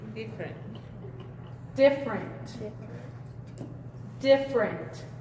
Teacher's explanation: Si se fijan, esta E no suena.